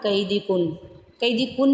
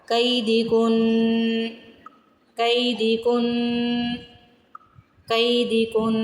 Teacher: کن ناک میں آواز بھی جائے گی، غنہ ہوگا